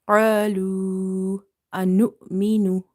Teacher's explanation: the stretching for this waw will be 2.5 alif, because after the waw as a madda, you see hamza in the next word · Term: matte munfasil